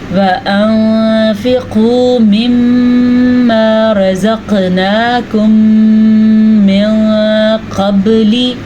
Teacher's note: دوبارہ سنیں، وَأَنفِقُوا مِمَّا رَزَقْنَاكُم مِّن قَبْلِ، با پہ قلقلہ ہو رہا ہے کیونکہ با بھی حروف قلقلہ میں سے ہے